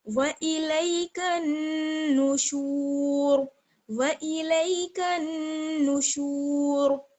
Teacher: اور اگر آپ سانس توڑنا چاہیں، وقف کرنا چاہیں، تو پھر یہاں پر آپ را کو ساکن کر دیں گی، اور را کو ساکن کرتے وقت پر پڑھیں گی، یعنی موٹی پڑھی جائے گی کیونکہ شین پر جو ہے وہ پیش ہے